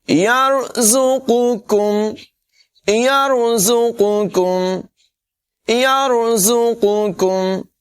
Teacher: یہ جو قوف ہے دو نقطوں والا، اس کو پر پڑھیں گے، اور ڈنڈی والا کاف جو ہے اس کو باریک پڑھیں گے۔